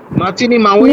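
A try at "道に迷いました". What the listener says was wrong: না স্যার মাচিনি না, মিচি।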